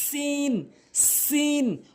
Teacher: জিহ্বার আগার সামনে দুইটি দাঁতের আগা